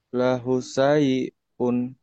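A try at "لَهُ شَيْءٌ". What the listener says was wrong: Launya panjang. Lahu panjang.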